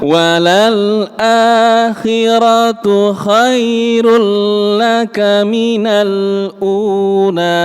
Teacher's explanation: Ada hukum idgham bila ghunah. Masuk tanpa ditahan lama. Tasdid biasa mawon.